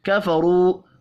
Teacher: را کو پیش کی وجہ سے پر پڑھیں گے، واو مدہ 1 الف کے برابر کھینچ کر پڑھا جائے گا۔